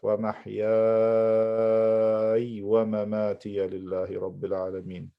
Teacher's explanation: So I have to stretch this mad for 6 harakat. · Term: mad lazim kalimi mukhaffaf